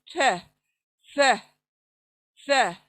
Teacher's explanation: जबान चौड़ी होती है और स अदा होता है, सीन की आवाज बिल्कुल नहीं। स स टच करे जबान को सामने के दांतों के बाहर लाकर, फिर वहीं से ये पतला बारीक पढ़े जाने वाला लेटर है।